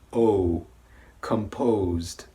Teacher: But for the second word, composed, notice that my lips protrude forward and they kind of come closer together